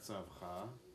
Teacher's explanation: the emphasis is going to be on the last syllable of the word.